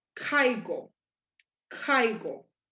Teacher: You're hearing that A a little bit stronger than the I.